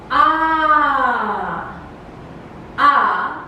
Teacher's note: the center and back part of the tongue is usually in a fully open position with no contact however between the rims of the tongue and